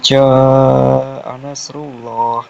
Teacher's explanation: di ja itu kan alifnya itu kan panjang ada harakat panjang itu dibaca 5 sampai 6 harakat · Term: mat wajib mutasil